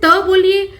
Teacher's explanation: त के उच्चारण में जीभ को रोक ऊपर के दांतों को स्पर्श करके वायु का रास्ता रोकती है।